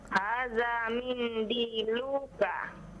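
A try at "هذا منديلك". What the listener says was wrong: Nah, lu-nya jangan dipanjangkan ya.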